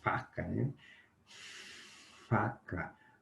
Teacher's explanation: o dente superior lábio inferior atrapalha a saída do ar